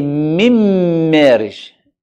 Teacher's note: إدغام كامل, the noon is completely gone. You don't hear the sound when you have noon and mim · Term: idgham كامل